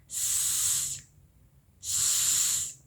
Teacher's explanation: The third one is alveolo-fricative. For this fricative, the tip of the tongue move up against the gum line behind your upper teeth.